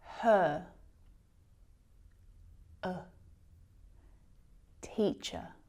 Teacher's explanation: This is our relaxed, lazy schwa sound. We really need to relax our jaw.